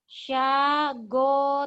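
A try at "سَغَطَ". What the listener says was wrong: Tanya ujung lidah. Cadel. Sa. Sagoto.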